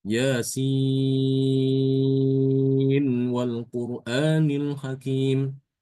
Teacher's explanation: Imam Hafaz membaca dengan izhar mengizharkan nun ya ketika bertemu dengan wawu. Idzar ini dibaca dengan jelas. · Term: idhar